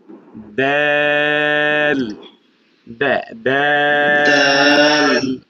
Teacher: দাল তে, জিহ্বার আগা, সামনের উপরের 2 দাঁতের গোড়ার সঙ্গে লাগিয়ে উচ্চারিত হয়।